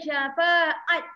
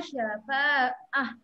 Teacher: Berhenti kat dia, dia bukan bunyi ta, dia bunyi ha. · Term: ta marbutah